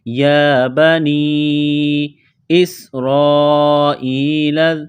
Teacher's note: یا کو ایک الف کے لمٹ میں کھینچنا ہے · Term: مد